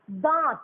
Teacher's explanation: দন্তের নটা ছিল নাসিক্য ব্যঞ্জন ধ্বনি, তয়ের সঙ্গে ছিল, কিন্তু তয়ের সঙ্গে দন্তের নটা দাঁত যখন বলছি তখন দন্তের নটা লুপ্ত হয়ে যাচ্ছে এবং পূর্ববর্তী স্বরধ্বনির মাথায় গিয়ে বসছে। যেমন দয়চন্দ্রবিন্দু আকারের মাথায় গিয়ে বসছে। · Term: নাসিক্যি ভবন